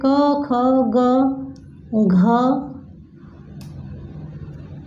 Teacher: ये प्रथम वर्ग हुआ जो कि कंठ से बोला जाता है